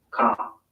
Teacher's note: Father ends in a simple schwa vowel, like father. And in car, the vowel sound is lengthened in place of the R sound.